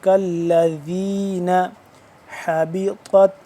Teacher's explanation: الذین، ذال نرمی سے پڑھیں گے، کالذین حبطت، حا زبر حا، حا کو حلق کے درمیان والے حصے سے پڑھیں گے ، دوسرے ہا سے جدا کر کے، وہ والا جو دوسرا